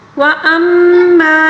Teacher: میم مشدد کا غنہ ہے